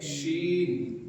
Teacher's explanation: زبان کے بیچ کو اوپر کے تالو سے چپکا کے بولیں گے، جیسے جیم میں بولے تھے جیم، ایسے ہی بولیں گے شین.